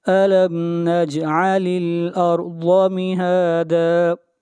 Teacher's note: علم نجعل، لام کو ملائیں گے لام کے ساتھ، نجعل الارض، را کو موٹا پڑھیں گے، را سے پہلے فتحہ ہے، اور ضاد کو موٹا پڑھیں گے، ضاد حروف مستعلیہ میں سے ہے